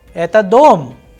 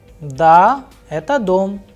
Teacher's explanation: in the first sentence where the person is asking a question, eta dom, there is a rise in the tone, whereas when answering the question, da, eta dom, there is a fall in the tone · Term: intonation